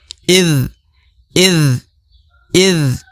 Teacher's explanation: Huruf lidah, ujung lidah berada di antara gigi seri atas dan bawah ya. Idh. Huruf dha sukun ya.